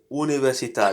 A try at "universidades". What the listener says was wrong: It's not tades, but dades.